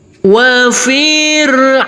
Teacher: untuk yang empat harakat kita kasih Irama Nada naik